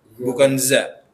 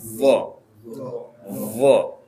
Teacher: Jadi lidahnya lebih melebar dan nempel ke gigi atas